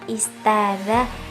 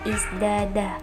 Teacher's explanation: bunyi yang mempengaruhinya itu za majhur, sedangkan bunyi yang dipengaruhinya itu tak mahmus, dan bentuk asimilasinya ta yang bertransformasi menjadi dzal, karena dzal tersebut menyerupai za pada sifat jelas makhrajnya.